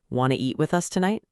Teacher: Or even faster, casually, want to eat with us tonight? See how do you almost disappears completely sometimes